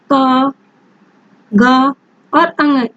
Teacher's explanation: इन्हें उच्चारित करने में हमारे मुख से कम वायु निकलती है। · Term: अल्प प्राण व्यंजन